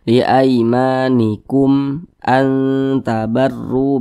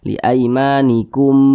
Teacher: Tapi kalau selain daripada ba dan mim, semua hukumnya namanya izhar syafawi. Karena dia izhar maka dibaca jelas, tidak berdengung. Jadi dibaca pendek saja.